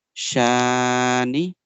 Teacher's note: Inna. Make the sheen sound longer because after fatha alif madda comes.